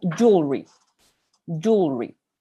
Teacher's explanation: También lo van a escuchar como jewelry, jewelry, sin esa pequeña L